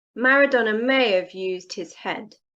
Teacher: in connected speech when we say the sentence quickly we use of instead of have